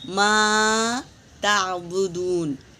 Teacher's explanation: ما میں الف مدہ ہے، 1 الف کے برابر کھینچیں گے، صاف ادا کریں گے۔